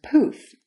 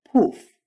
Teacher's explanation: For both of these consonants, the difference between English and Russian is all about that puff of air. In English, there's poof, and in Russian, poof.